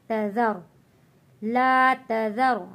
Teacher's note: یہاں پہ تا پتلا پڑھا جاتا ہے، ذال کو نرمی کے ساتھ پڑھیں گے اور را کو یہاں ہم موٹا پڑھیں گے